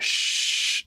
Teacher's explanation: here so if I go so when I go sh sh there's energy at the high frequencies